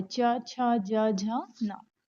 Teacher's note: तालव्य जो है इनका उच्चारण तालु से होता है, मतलब जब आप बोलोगे तो आपकी ये जो जबान है वो आपके तालु को स्पर्श करेगी